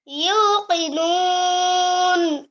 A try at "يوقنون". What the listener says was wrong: মানে তোমার এই যদি নাক দিয়ে বলো তাহলে নুন এমন হচ্ছে তুমি মুখ দিয়া মুখটা গোল করে বলতে হবে এটা পেশ না পেশটাকে গোল করে দিতে হবে ইউকিনুন নাকে যায় দেখা ধরো নাকে ধরে দেখো তোমার নাকে যাচ্ছে يوقنون